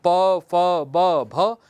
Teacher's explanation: आप बिना ओष्ठ के प्रयोग के प, फ, ब, भ ये आप नहीं बोल सकते